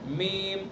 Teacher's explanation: میم کا مخرج دونوں ہونٹوں کی خشکی کا حصہ، جو باہر والا حصہ ہے ہونٹوں کا، اس سے میم کو ادا کریں گے.